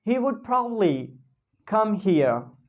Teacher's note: Probably you can simply speak probably. Just remove the next B and speak probably.